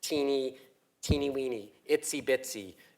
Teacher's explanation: All those have eh and e vowels. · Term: front vowels